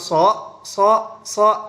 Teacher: keluar daripada Bunyi lamino palatal atau daun lidah langit-langit atas sedangkan dan juga keluar daripada oral atau mulut nah ketika kita